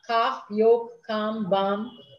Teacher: And in some places, the L is silent.